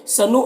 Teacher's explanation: حمزہ ساکنہ ہے، واو کی شکل میں جھٹکا لگے گا